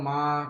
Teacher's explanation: যেহেতু খাড়া জবর তাই এক আলিফ টান দিতে হবে